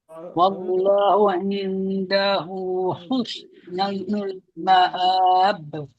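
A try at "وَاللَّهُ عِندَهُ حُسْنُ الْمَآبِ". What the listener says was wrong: Ah cantik. Yang tu rasa eh dia punya beza.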